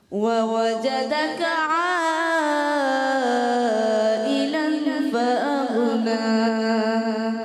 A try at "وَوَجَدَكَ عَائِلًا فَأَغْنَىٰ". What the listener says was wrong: غنہ بھی کرنا ہے ووجدك عائلا فأغنى.